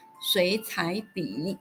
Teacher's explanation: we apply the basic third-tone change rule again and change cǎi to second tone while bǐ remains its original third tone.